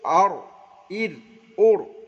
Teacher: যেমন অড়াইয়ের মাখরাজ জিবের আগার উল্টো পিঠ, জিবের আগার উল্টো পিঠ তার বরাবর উপরে তালুর সঙ্গে লাগে উচ্চারিত হয় অড়